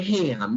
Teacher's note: I need to have a stream of air through the nose. If you close your nose, if you plug your nose, you can't say it, right? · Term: nasal